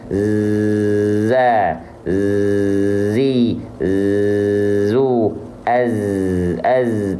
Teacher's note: Namun yang saya ingin sampaikan kepada teman-teman semua, pastikan zai ini dia punya sifat yang khas dari huruf zai, yaitu sofir. Sofir itu desis, berdesis, tapi karakteristiknya seperti desis lebah di sini.